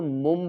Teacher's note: جیسے طرح ہم من پڑھتے ہیں اس کو ہم مم پڑھیں گے، نون کی آواز کو میم کی آواز میں بدل کر پڑھیں گے۔ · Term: اقلاب